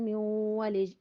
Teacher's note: ادغام بالغنہ، نون ساکن کے بعد واو حروف ادغام میں سے آ گیا